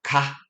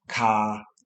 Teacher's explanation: But for the R sound, your tongue does not touch the top of your mouth in the same way. In British English, the R is often softer, I believe. Yes, softer than in American English, especially at the end of words.